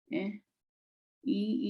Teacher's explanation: [Music] nasal tone is known um as a nasal mark so these vowels are pronounced with air going through the nose